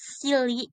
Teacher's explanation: made with the vocal fold open, allowing the free passage of air across the glottis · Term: voiceless